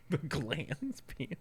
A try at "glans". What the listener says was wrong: No, it's glands. There's no D, just glands penis.